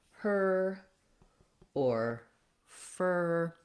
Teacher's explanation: move so if i'm saying a word like her or fur when i'm saying that er my tongue is in the position for the american r it's not moving into it